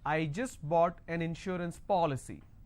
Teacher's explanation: to stress on the third from right, which means I will stress on po.